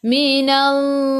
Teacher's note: sebelum Allah ada baris atas kena baca tebal.